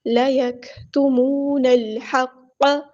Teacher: لیکتمون الحق، واو مد آیا تو ایک الف کے برابر لمبا کریں گے، نون کو ہم نے لام کے ساتھ ملا دینا ہے، حمزۃ الوصل ہمارا ڈراپ ہو جائے گا، لام یہاں پر لام قمری ہے، اس کو ہم ظاہر کریں گے، ہا کو وسطی ہے لیکن مل تھوڑا سا ادا کریں گے، قاف ہمارا ہیبریٹر ہے، پورا ادا کریں گے۔